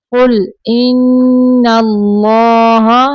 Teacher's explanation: نون مشدد پہ غنہ کریں گے، اللہ کلام پر پڑھیں گے